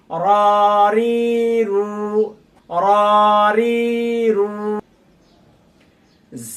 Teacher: র আলিফ জবর র, র ইয়াজের রি, রা ওয়াও পেশ রু, রারি রু। রা উচ্চারণ করতে অনেকেরই ঠোঁট গোল হয়ে যায়, ঠোঁট গোল করা যাবে না।